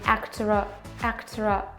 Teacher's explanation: we pronounce a small r in actora, actora. And I here is not pronounced like actor-I, but actor, I think.